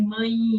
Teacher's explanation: Algumas regiões, por exemplo, do Brasil, falam o E muito forte como I